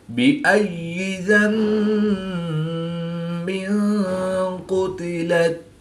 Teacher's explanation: دو زیر کی تنوین کے بعد قاف حروف اخفا میں سے ہے، تو یہاں پر اخفا ہوا، یعنی غنہ زمانی کر کے پڑھیں گے